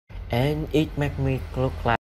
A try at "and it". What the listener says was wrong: So, like, what happened right here, he didn't connect it right. So he did, and it, make sure you say, and it. And so, and it. So it goes up, you don't go down. And it.